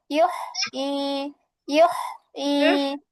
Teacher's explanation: আমি কিন্তু কণ্ঠের মাঝখান থেকে একটু চাপিয়ে নিয়ে আসতেছি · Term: বড় হা